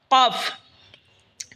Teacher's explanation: জিহ্বার আগা থেকে একটু আগে বাড়িয়া তার বরাবর উপরে তালের সঙ্গে লাগে উচ্চারণ হবে কাফ